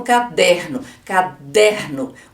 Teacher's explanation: a sílaba tônica é a penúltima como por exemplo caderno caderno o der é a sílaba que eu falo mais forte é a sílaba tônica